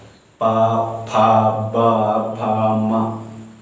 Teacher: जैसे कि पा बोलने से मेरे दोनों हाथ मिल रहे हैं, दोनों होठ स्पर्श हो रहा है। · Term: ओष्ठ